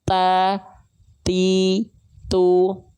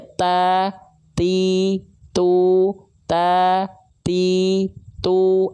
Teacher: Tapi penghususan untuk dua huruf yaitu huruf kaf dan huruf ta, dia bukan mengalir nafas tapi cukup berupa percikan-percikan nafas saja. Ya, sehingga kalau kita contohkan misalnya pada praktek di sini tak berharokat, jangan sampai dilafalkan berlebihan percikan nafasnya. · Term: hams